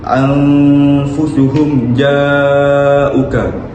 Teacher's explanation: mim bertemu dengan huruf jim. Mim itu dibaca dengan jelas dan tiada gunah. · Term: izhar syafawi